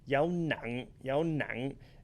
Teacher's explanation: The dấu nặng tone should be ending in your throat. So if you can't feel that glottal stop, then you're probably not saying it correctly.